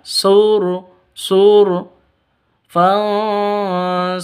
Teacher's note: Huruf 'r' adalah ro yang tebal, ro tafkhim, tebal